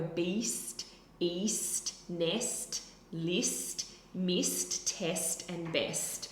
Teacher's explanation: With those vowels, a lot of them are high vowels, so they're high up in the mouth, and they're at the front.